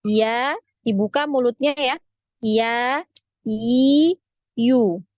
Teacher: lidah kita bagian tengah itu naik ya, naik ke langit-langit tapi tidak sampai menyentuh langit-langit. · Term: huruf iya